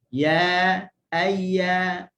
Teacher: kita tengok huruf ya keluar daripada wastul lisan tengah lidah. Tengah lidah ma'ama yuhadhi min hanakil ala, bertepatan dengan langit atas.